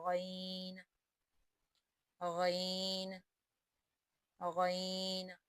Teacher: غین بھی حروف حلقیہ میں شامل ہے، لہذا اس کو حلق سے ادا کریں گے